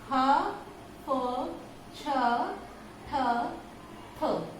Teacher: इनके बाह्य प्रयत्नों की यदि बात करते हैं तो विवार श्वास अघोष के साथ साथ महाप्राण भी हो जाएगा